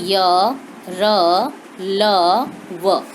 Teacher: जो हमारी जीभ का स्पर्श है वह मुख के अंदर किसी भी विशेष भाग से नहीं होता। इनको हम स्वतंत्र रूप से इनका हम उच्चारण कर सकते हैं। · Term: अंतस्थ व्यंजन